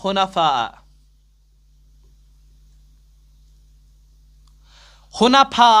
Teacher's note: مد متصل، اور 4 الف کے برابر اس کو پڑھنا ہے